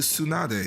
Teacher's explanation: the DE at the end tends to be its own syllable in a lot of Japanese names